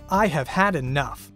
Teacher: If someone says, "I have had enough," with equal stress on all syllables, we understand that the speaker is being emphatic. This pattern is used to abrupt effect when we are angry or impatient.